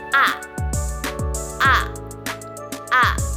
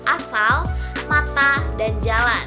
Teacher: Cara pelafalannya, lidah berada di tengah-tengah mulut. Dengan mulut terbuka lebar, bibir tidak dibulatkan.